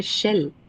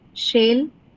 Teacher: Okay, this is a word which doesn't carry any diff thong. It only has the pure vowel a.